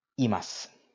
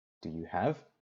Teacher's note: as with des, imasu, you don't pronounce the u at the end of the word.